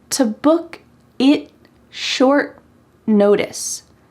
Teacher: the T at the end of it and short becomes what we call a stopped T. This is a little fancy word that means when you try to say the word it, you say it.